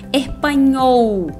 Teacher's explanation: nunca o l no final de palavra vai ter som de u como a gente costuma fazer em português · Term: som do L